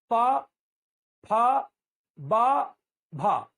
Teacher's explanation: मतलब होठ को चिपकाकर ही खोलेंगे तो ही ये निकलेंगे। मतलब हम चाहें कि यदि मुंह खोल के पा बोले ऐसे, तो नहीं निकलेगा। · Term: औष्ठ्य